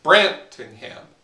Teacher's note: it's stressed, unstressed, unstressed